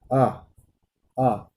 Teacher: जिसे आप बोलें आ, आ, तो आपको जो जीभ का अंतिम भाग है, जो पश्च भाग है, ठीक है, उसी से ये स्वर का उच्चारण हो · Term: पश्च स्वर